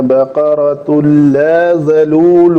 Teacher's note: تو ان کے بعد لا آیا ہے تو یہ تنوین کا لام کے اندر مکمل ادغام ہو جائے گا